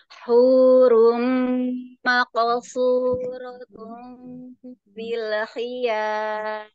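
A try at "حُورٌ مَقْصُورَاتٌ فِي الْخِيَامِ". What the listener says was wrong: Masya Allah, barakallahu fiik, jazakillah khair.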